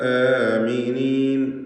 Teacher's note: ആമിനീൻ മദ്ദുൽ ബദൽ എന്നാണ് പറയപ്പെടുന്നതെങ്കിലും പ്രത്യേകിച്ച് നമ്മുടെ റിവായത്തിൽ അവിടെ ദീർഘം വരുന്നില്ല, 2 ഹറക്കത്തിൻ്റെ അളവിലുള്ള ദീർഘം മാത്രമാണ്